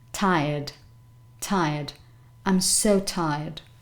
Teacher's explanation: remember that there's a slight aspiration at the beginning